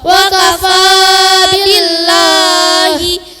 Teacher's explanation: dibaca tipis apabila lafaz Allah jatuh setelah harokat kasroh.